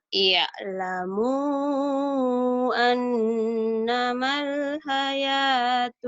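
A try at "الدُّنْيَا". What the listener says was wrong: Maunya idhar komariah. Alif lam komariah itu idhar komari, jangan ditahan. Nih, kamu ainnya kurang enak, perak tuh, nggak enak nih ya.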